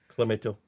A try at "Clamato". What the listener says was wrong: you're putting like a real emphasis on the toe.